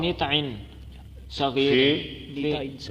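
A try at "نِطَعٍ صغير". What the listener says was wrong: نیتائن پڑھے، نتن نہ پڑھے.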